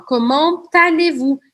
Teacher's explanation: Eu falo comment allez-vous? Eu pronuncio o T porque a próxima palavra começa com A. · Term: Liaison